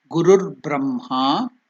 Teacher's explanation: For easier pronunciation in Sanskrit, that Visarga will be changed into Gurur Brahma. Instead of telling Guruhu, it cuts the pronunciation, the speed of the pronunciation cuts to make it easy.